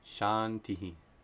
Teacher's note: If anusvāra precedes a dental sound, it's pronounced like the dental nasal, na.